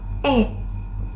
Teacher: dibentuk dengan lidah yang berada di posisi tengah dan depan serta bibir yang rileks